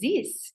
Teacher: many French speakers will read the th as a s or a z sound. So instead of saying this, we'll hear this, that's how a lot of people like mimic the French accent by putting a z instead of any th sounds, because it can be very challenging.